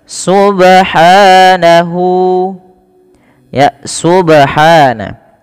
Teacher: pada lafal ba di sini ada bacaan qalqala yang di mana bnya ini perlu kita pantulkan